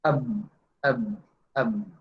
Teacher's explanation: Selain hamas itu jahar. Jahar itu ya itu tadi bergetar.